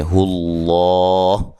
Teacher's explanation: لفظ اللہ کو موٹا ادا کرنا ہے، اس سے پہلے حرف پر پیش ہے